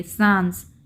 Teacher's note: हम नाक और मुंह दोनों से हवा निकालेंगे, सांस, ठीक है। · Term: अनुनासिकता